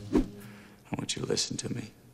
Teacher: The T plus Y sound becomes a ch sound again. And to is reduced to ta.